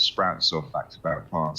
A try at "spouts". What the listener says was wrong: spouts. You added the R. corrected to a pun.